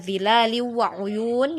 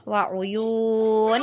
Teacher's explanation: untuk panjang, ya, dari bacaan mat aridnya, ya, itu adalah 6 harokat